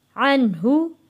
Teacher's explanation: नून साकिन है, यहाँ गुन्ना नहीं करेंगे क्योंकि अगला लफ्ज़ हरूफे हल्की आ गया है।